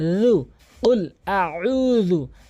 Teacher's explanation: জিব্বার আগা এবং দাঁতের আগার সঙ্গে লাগাবেন, সামনে দুই দাঁতের আগা